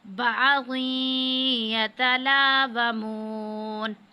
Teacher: تنوین کے بعد یا آ رہا ہے تو یہ حروف یرملون میں سے ہے، تو ادغام کی صورت میں غنہ کریں گے